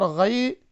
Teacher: غین یا زبر غی، یہ حروف لین ہیں، اسے جلدی سے پڑھیں گے، بالکل نہیں کھینچیں گے